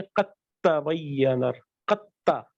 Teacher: دال کے بعد جب تا آئے تو اس کو اسیمولیٹ کر دیتے ہیں. صحیح سے سائلنٹ میں چلے جی.